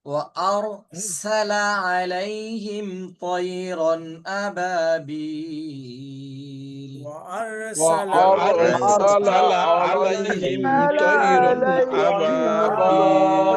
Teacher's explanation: সিনের বাতাস একটু বের হবে।